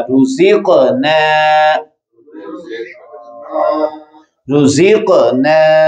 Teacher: رزق قاف قلقلہ جزم کے ساتھ آ گیا